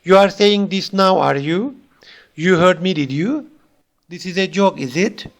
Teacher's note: So these are typically spoken with a falling tone on the tag.